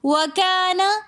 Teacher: وکانا کے اندر بھی الف مدہ ہونے کی وجہ سے ہم اس کو ایک الف کی مقدار کھینچ کر پڑھیں گے